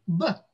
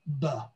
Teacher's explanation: And one thing I do want to mention when you're working at the phoneme level is the importance of pronouncing pure phonemes. I went to great efforts as I was pronouncing that b sound to not add a schwa at the end, that vowel sound, because we want to produce that sound as pure as we can, b rather than b.